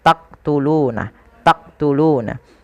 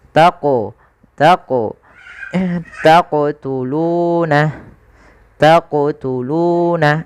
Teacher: Jadi ketika melafalkan huruf qaf itu ketika sukun dipantulkan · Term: qalqalah